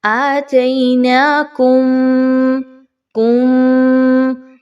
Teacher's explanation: آواز کو ناک میں لے کے جائیے, تھوڑی دیر کے لیے ایک الف کے برابر روک کے رکھیے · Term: غنہ